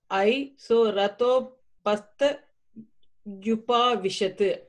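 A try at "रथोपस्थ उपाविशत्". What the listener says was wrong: Yes, Rathopaste Yupavishat.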